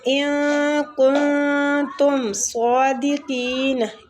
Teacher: ان اور کن دونوں پہ اخفا ہوگا